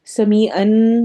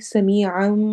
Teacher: عن یہاں پہ ہمارا اقلاب ہو رہا ہے، بالکل ہونٹ بند نہیں ہوں گے، ہلکا سا بیچ میں فرق رہے گا، اور وہ رکھتے ہوئے ہم نے اس کو پڑھنا ہے۔ نون کی آواز کو میم میں بدل دیں گے، سمیعن نہیں پڑھیں گے، سمیعا میم کی آواز لے آئیں گے۔